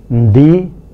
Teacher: the bilabial plosive assimilates to the following consonant, and so we get ndi